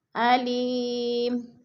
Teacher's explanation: وقف کی صورت میں 2 پیش نہیں پڑھے جائیں گے بلکہ جزم میں بدل کر پڑھیں گے